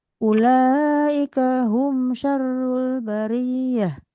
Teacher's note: Bariyah, ya-nya yang tasdid ra-nya tidak.